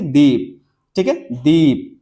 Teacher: दीप में क्या है, तो ई ज्यादा खींचना पड़ा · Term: दीर्घ स्वर